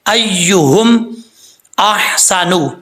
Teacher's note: حمزہ کے بعد ہا جو ہے یہ ہا بریک ہے، اس کو بھاری ساؤنڈ کے ساتھ نہیں پڑھنا۔ · سین حروف صفیریہ میں سے ہے، اس کو سیٹی کے ساتھ پڑھا جائے گا